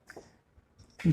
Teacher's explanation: घा का जो उच्चारण होता है वो होता है कंठ से